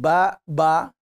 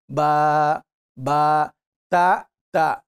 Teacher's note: And when we say 2 counts longer, we mean, for example, ba, ba. So ba is 1 count, ba is 2 counts.